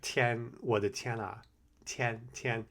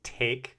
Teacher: But when you say tian, it's supposed to be on your teeth, not where you would put it in English.